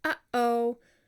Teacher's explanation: you have a harsh onset of the word, and in the middle of it, you completely close your throat. And that, my friend, is a glottal stop.